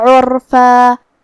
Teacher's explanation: کلمت عرفہ میں یہاں حرف العین کو ہم حلق کے درمیان والے حصے سے پڑھیں گے. پھر جو کہ یہاں بھی را پہ جزم ہے اور اس سے پہلے والے حرف پہ مطلب عین پہ پیش ہے تو ہم حرف الرا کو بھاری آواز میں پڑھیں گے.